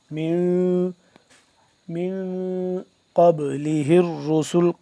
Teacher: مین نون ساکن پہ کیا کریں گے؟ ہم یہاں پہ اخفا کریں گے